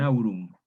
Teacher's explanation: una articulación implosiva agrupada a la vocal precedente como por ejemplo en aurum entonces está el diptongo y ahí